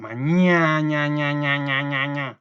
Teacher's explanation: En el caso de mañana, ña lleva la mayor fuerza de voz.